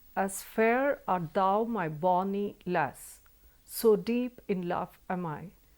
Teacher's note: each line begins with an unstressed syllable